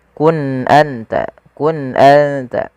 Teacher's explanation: maka kita hukumi dengan bacaan izhar, yaitu suara nunnya harus dibaca dengan jelas, tanwinnya atau suara nunnya.